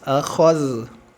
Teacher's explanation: Akhoz, wa iz akhozna, jangan akhoz tapi akhoz. Kho sempurna tebal, zal sempurna tipis